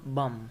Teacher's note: Usually, b isn't pronounced when it occurs at the end of a word after m. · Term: deletion